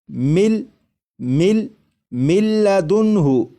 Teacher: جب ادغام کریں گے تو غنہ بھی نہیں کریں گے · جب نون کو لام میں ادغام کریں گے تو نون کی آواز ختم ہو جائے گی، اور میم کے بعد پھر لام کی آواز آئے گی